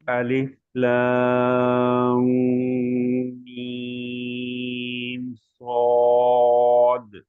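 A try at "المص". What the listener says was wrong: जी साद पे आपकी थोड़ी सी तवज्जो की जरूरत है । तो होंठों की गोलाई आगे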